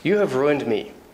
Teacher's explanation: my intonation goes down at the end of sentences.